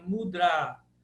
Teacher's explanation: Esse mudr termina com a longo